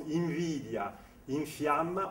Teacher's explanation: quand on prononce invidia, infiamma, on ne prononce pas N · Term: M labiodentale